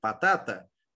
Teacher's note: logo qual é a minha sílaba tônica é a do meio batata